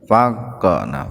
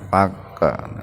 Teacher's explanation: Sa mad tabi'i alif, faqa, qalqalah sugro, huruf qaf yang sukun ya, yang mati di tengah-tengah kata, maka qafnya dihentakan, dipantulkan, faqa, secara ringan.